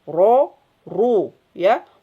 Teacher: ro ketika fathah dan domah domah maka dia menjadi tebal